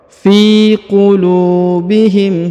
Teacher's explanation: huruf fi dibaca 2 harokat ya, karena di depannya terdapat ya sukun. Fi qulu, huruf lu dibaca panjang 2 harokat karena di depannya terdapat waw sukun.